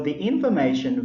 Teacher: we pronounce thee because the word begins with letter I vowel sound